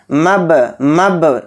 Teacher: मबसूस, तो ध्यान से देखिए, बा के ऊपर जज़्म आ गया और बा हरूफ क़लक़ला के हरूफ में से एक हर्फ है तो इसलिए बा में क़लक़ला भी करेंगे